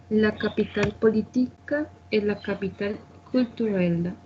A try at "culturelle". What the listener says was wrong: tenemos problemas con la pronunciación de la U. culturela.